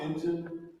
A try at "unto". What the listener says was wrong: No, you're close. Not into, but go quicker English. Unto. Not into, but unto. Old quicker English. Unto.